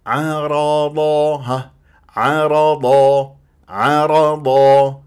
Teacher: العين دوما مرققه والراء بعدها مفخمه والضاد من احرف الاستعلام مفخمه مرتبه ثانيه فلا تيجي تقول لي عرض عا ما عندي عا